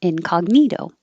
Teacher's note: Incognito. The cog, your tongue goes to the G position in the back, but you don't release it.